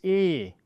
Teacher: The German E is very often very open. It's E. It is very comparable to the French E, which has an accent aigu on it. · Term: open E